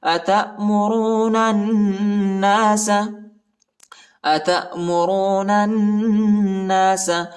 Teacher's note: أَتَأْمُرُونَ النَّاسَ، أَتَأْمُرُونَ النَّاسَ، نون کو نون کے ساتھ ملائیں گے اور ادھر غنہ بھی کرنا ہے، الف اور لام نہیں پڑھا جاتا۔